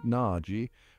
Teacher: where the O shifts towards an a sound similar to the a in father and the g almost disappears blending seamlessly with the final e these variations might seem subtle